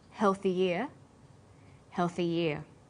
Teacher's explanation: When healthy is linked together with ear, a y sound is added.